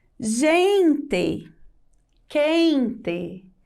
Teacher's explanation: Quando nós pronunciamos quente, a última sílaba ela tem um som mais fraco. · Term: sílaba tônica